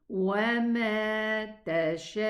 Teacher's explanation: So it's gonna be pronounced oo, 2 counts. So I'm gonna extend this alif 4 counts, but the waw is 2 counts.